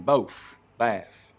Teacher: you also get f for final th sounds